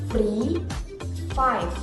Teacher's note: by using B the lower lip and the upper front jadi bunyi yang dihasilkan ketika bibir bawah menyentuh gigi atas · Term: lebiodental